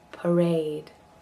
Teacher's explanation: the first one is a schwa and the second one is a diphthong